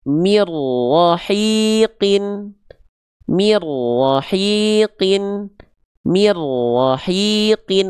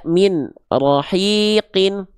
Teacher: nun sukun ketemu huruf ro itu idgham bila gunah bunyi nun sukunnya dileburkan ke huruf ro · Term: idgham bila gunnah